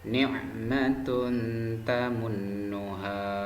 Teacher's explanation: Jadi dhamma tanwin bertemu ta itu dibaca samar anak-anak, karena dhamma tanwin bertemu dengan huruf ta. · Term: ikhfa